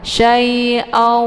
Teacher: Ini merupakan idgham bi ghunnah atau idgham ma'al ghunnah, ya. Maka ini cara bacanya didengungkan, jadi tanwinnya dimasukkan ke dalam huruf waw sambil ditahan.